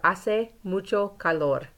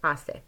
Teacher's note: Our H's are silent, but we do pronounce the E.